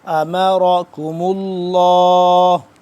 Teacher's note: را موٹا کاف باریک، اور آگے لفظ اللہ پر کر کے پڑھنا ہے.